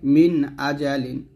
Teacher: ইজহার হলো আরবি শব্দ আর বাংলা অর্থ হচ্ছে স্পষ্ট করে পড়া অর্থাৎ গুন্না হবে না